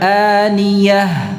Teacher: Dari pangkal tenggorokan ya. Hamzah itu ya, bukan ain.